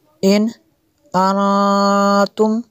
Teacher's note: نون ساکن کے بعد تا حروف اخفا میں سے ہے تو یہاں پہ اخفا ہوگا اس لیے غنہ کیا